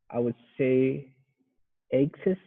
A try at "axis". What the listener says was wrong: The difference is the second vowel sound. Axis, and access. wrote, yeah, was more of an E sound, like a short E, eh. But this word is axis, axis. And you got to emphasize the first syllable, axis.